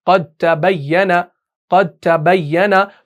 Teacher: तो हम दाल को आगे ता के अंदर क्या कर देते हैं, मुदगम कर देते हैं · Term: इदगाम मुताजानिसीन